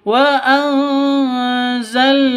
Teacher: Wa anzalna minal musirati maa wa anzalna minal musirati wa anzalna nun mati bertemu dengan za atau zain Cara bacanya samar didengungkan siap-siap ke huruf zanya karena bacaan ikhfa hakiki.